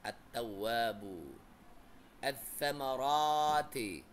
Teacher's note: Cara bacanya dengan mengidghamkan atau mentasydidkan ke dalam huruf hijaiyah, sehingga alif lam tidak dibaca meskipun tulisannya ada.